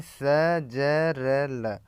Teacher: दांतों के मूल से यानी स ज र ल